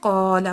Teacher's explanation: الف کو بھی ہم نے قاف کے ساتھ موٹا ہی پڑھا ہے۔ تو الف کا قاعدہ یہ ہوتا ہے کہ یہ اپنے کے ساتھ جس طرح کا حرف ہوگا جس کو لمبا کر رہا ہے وہ اس کی طرح ہی پڑھا جائے گا۔